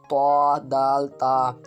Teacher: زبان کی نوک اور اوپر کے دانتوں کی جڑ سے ادا ہوتے ہیں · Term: حروف نطعیہ